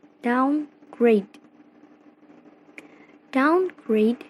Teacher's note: class the combination surface as adverb are usually final stressed and the primary stress is placed on the second word and the secondary stress on the first word